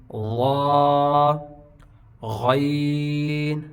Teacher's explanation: غین یہ بھی خلق سے ادا ہوتا ہے، خا کے ساتھ ہے.